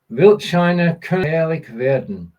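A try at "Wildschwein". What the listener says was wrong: Almost. You missed out the W there.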